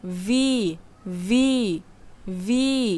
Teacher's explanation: উপরের দুই দাত নিচের ঠোটের সাথে মিলিয়ে বলতে হবে